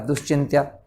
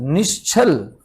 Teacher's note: क्योंकि च तालव्य है तो विसर्ग किस में बदल जाएगा, तालव्य श में